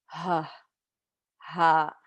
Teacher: Ha comes from the bottom of your throat. And if you find that little dip at the bottom of your throat and you touch it and you say the letter ha, you should be able to feel it vibrate.